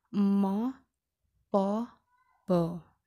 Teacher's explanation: Nah, jika bibir itu bernama labial, berarti bibir atas dan bibir bawah, dua bibir bertemu, namanya adalah bilabial